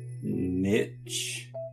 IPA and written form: nɪtʃ (niche)